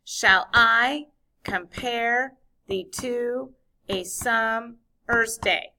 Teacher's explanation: Second syllable of each foot is the one that gets the accent or the stress. So because there are 5 feet in a line, each foot has 2 syllables, 5 feet in a line, it's called a pentameter line. · In each foot, the second syllable of every foot has to have the accent. It has to have the stress. So it'll go like ba-boom, ba-boom, ba-boom, ba-boom, like a heartbeat. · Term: iambic pentameter line